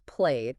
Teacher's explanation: you use the voiced version of the ending, which is a soft D.